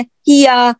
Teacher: Lesson number 12 मखरज number 12 का part 2 है ये कि या की अदायगी के वक्त वसतुल लिसान यानी जुबान का दरमियानी हिस्सा नरमी के साथ तालू के उस हिस्से के करीब जाएगा या जाएगी जो मुंह से करीब है, जो मुंह के करीब है और जीम के मखरज से हटकर है, या बुलंद और बारीक आवाज वाला है।